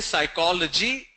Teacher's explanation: When we say psychology, then we stress on the second syllable